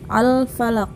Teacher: Huruf Qalqalah nya di akhir jadi ditebalkan ya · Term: qolqolah kubro